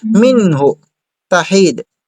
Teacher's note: Huwag mong patagalin sa hu kasi walang mad dito.